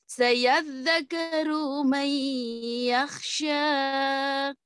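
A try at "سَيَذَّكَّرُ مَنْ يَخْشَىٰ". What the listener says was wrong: Coba sayadzakarurunya tidak boleh panjang. Yakhsha. Tiap ada panjang dua harokat, tidak boleh terlalu panjang. Sayadzakaru man yakhsha. Tidak boleh terlalu ditarik terlalu lama.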